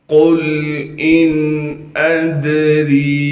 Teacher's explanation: قل ان ادری، قاف کو موٹا کر کے پڑھیں گے، قاف کو لام ساکن سے ملائیں گے، قاف لام پیش قل، حمزہ کو نون ساکن سے ملانا ہے بغیر غننے کے، حمزہ نون زیر ان، حمزہ کو دال ساکن سے ملائیں گے کیونکہ دال ساکن ہے، دال پر قلقلہ کریں گے یعنی آواز کو ہلائیں گے